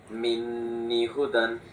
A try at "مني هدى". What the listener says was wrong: মিন্নি একালিফ টান হবে।